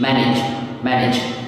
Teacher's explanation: Bình thường này đọc cuối ta đọc là j, nhưng mà để cho dễ đọc ta đọc là ch